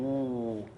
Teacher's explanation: when you open up your lips, those resonances sort of move back in, and that's the classic sound of w